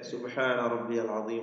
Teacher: സുബ്ഹാന എന്ന് പറയുമ്പോൾ സീനിന്റെ സഫീർ പുറത്തേക്ക് വരുന്നു, അടുത്തുള്ള ആൾക്ക് കേൾക്കാൻ പറ്റും